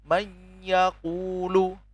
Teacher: nun sukun dan ya ini menimbulkan sifat mendengung